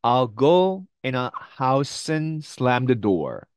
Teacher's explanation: and의 드 발음은 없습니다. 그리고 여기 있는 이 에 발음도 사실 음가가 굉장히 약하거든요.